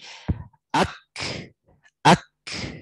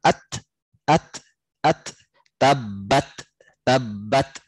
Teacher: dia itu dibuat ringan dengan menjadikan si kaf dan ta itu hams.